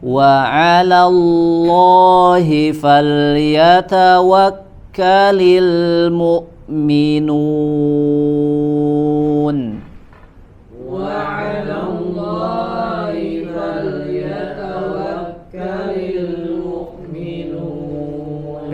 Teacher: perhatikan huruf lamnya dibaca tipis